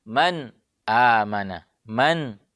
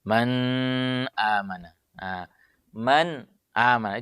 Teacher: Maka baca dengan jelas huruf nunnya tanpa tambahan gunnahnya. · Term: izhar